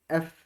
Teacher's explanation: দীর্ঘ ইকার নিজে একটা দীর্ঘ ইকার, তাই এটা অবশ্যই লম্বা হবে। এফ, এফ উচ্চারণ করার সময় আপনাদের দুই ঠোঁটের মাঝখান দিয়ে বাতাস বের হবে।